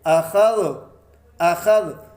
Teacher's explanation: تو خا حروف مستعلیہ میں سے ہے، اسے ہم موٹا اور پر پڑھیں گے۔ یہاں جب ہم وقف کریں گے تو غال کو ساکن کر دیں گے، اخذ، اخذ۔